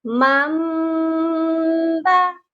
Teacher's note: یہ کبھی بھی من با نہیں پڑھا جائے گا، یعنی کہ نون کی آواز نہیں آئے گی، جسٹ میم کی آواز آئے گی